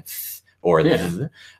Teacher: the interdental fricative, which is putting your tongue between your teeth and going th or th.